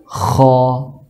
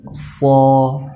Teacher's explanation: Nah, huruf isti'la ini disebut juga dengan huruf tebal karena ketika pengucapan hurufnya naiknya pangkal lidah ke langit-langit sehingga keluar suaranya o pada saat pengucapan huruf isti'la